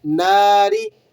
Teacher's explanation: ناری، نون الف زبر نہ ہے، الف مدہ ہے، 1 الف کے برابر کھینچ کر ادا کریں گے